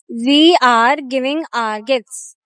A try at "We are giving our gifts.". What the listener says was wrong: But there was one word which you pronounced wrong. And that is this word. It's not R. We think it sounds fancy, so it is right. That's wrong. Its pronunciation is our.